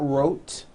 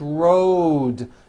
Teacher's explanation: Road. It's not wrote, unvoiced, it's road. The whole word is voiced. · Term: voiced D ending